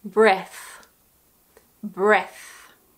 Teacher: There is a voiceless TH at the end.